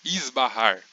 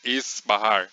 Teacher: vodka e isso acontece no português na palavra esbarrar Por exemplo quando a gente faz esse S por ele estar antes do b a gente pronuncia ele como um z esbarrar não esses barrar essa pronúncia até existe só que é